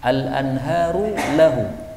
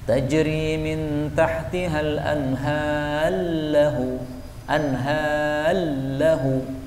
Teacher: roknya boleh dilebur masuk kepada lam, disebut idgham